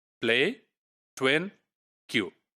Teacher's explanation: these approximants, they are basically devoiced. That's the proper term, that they are devoicing because of the context.